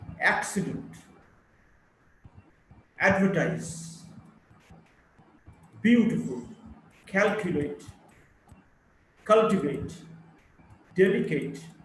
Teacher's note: Word with 3 syllables. The primary stress of the first syllable